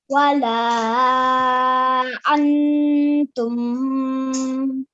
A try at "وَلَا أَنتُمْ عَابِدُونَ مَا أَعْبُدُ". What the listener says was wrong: Yeah, we do not prolong the tum. ولا أنتم عابدون ما أعبد. And just keep in mind that it's important that we do not prolong fatha dhamma kasra.